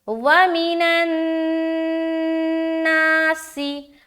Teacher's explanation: زیر کی آواز کو اکثر و بیشتر لوگ مجہول بنا دیتے ہیں، جو کہ غلط ہے۔ اپنی آواز کو معروف ہی رکھنی ہے · اب یہاں پر دیکھیے نون کے اوپر شد ہے نا شد، تو نون مشدد کا یہاں پر غنہ کریں گے